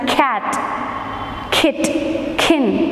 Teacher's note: air is blocked inside the mouth and then we release it so it comes out with a bursting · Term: stops